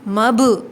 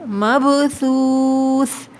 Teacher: با پہ آواز پلٹ کر آئے گی، مب، ٹھیک ہے، مبثوث۔ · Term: قلقلہ